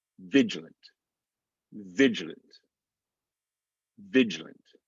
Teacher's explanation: it's almost like we're going from the g straight to the l